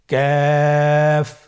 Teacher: কাফের মাখরাজ হলো জিহ্বার গোড়া থেকে একটু আগে বাড়িয়ে তার বরাবর উপরে তালির সঙ্গে লাগিয়ে উচ্চারিত · কাফ উচ্চারণের ক্ষেত্রে অবশ্যই পাতলা করে উচ্চারণ করতে হবে এবং তিন আলিফ টেনে পড়তে হবে।